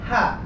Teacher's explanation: Ketika suara H, huruf H selesai diucapkan, suaranya masih mengalir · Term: rokhawah